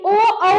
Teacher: ओ कंठ से आ रही है। उसके बाद दोनों ओष्ठ साइड से थोड़ा-थोड़ा टच होता है। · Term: कंठस्थ्य वर्ण